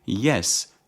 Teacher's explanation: starts with a palatal consonant because the tongue approaches the hard palate